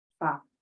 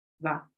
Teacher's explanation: These two sounds are paired together because they take the same mouth position. F is unvoiced, meaning only air passes through the mouth, and V is voiced